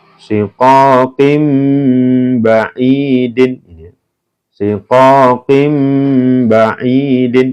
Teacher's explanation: dibaca bunyi n berubah menjadi m dibaca mendengung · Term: iklab